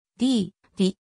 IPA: diː